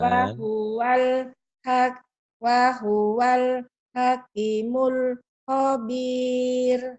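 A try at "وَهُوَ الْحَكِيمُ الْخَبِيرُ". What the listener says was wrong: Q-nya panjang. Wahuwal hakimul khobir.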